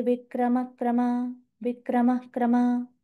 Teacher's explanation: नुसता हकाराचा उच्चार नाहीये. विक्रमक्रमा श्वास सोडायचा आहे पूर्णपणे. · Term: विसर्ग